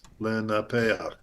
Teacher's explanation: the vowel is being pronounced prior to the final consonant, and that happens frequently with chet, and sometimes with ayin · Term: furtive patach